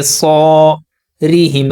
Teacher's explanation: الف سے پہلے زبر ہے، الف حروف مدہ ہے، زبر کو 2 حرکات کے برابر کھینچیں گے، صاد کو پر پڑھیں گے، صَارِهِمْ، را کو باریک پڑھیں گے، را کے اوپر جب زبر اور پیش ہوتا ہے تو را اس صورت میں موٹا پڑھا جاتا ہے، را کے نیچے زیر ہو تو را باریک پڑھتے ہیں۔